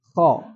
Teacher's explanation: Dia makhrajnya tidak bersandar apapun. Jadi terbuka dan itu mengakibatkan huruf itu mengalir. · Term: rakhawah